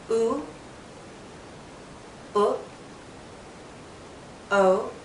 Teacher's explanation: think about the position of our lips which is generally rounded and the position of the tongue with the back being high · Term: back vowels